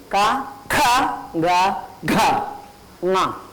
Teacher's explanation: 1 and 3 you have to recite softly. 2 and 4 you have to recite, with effort.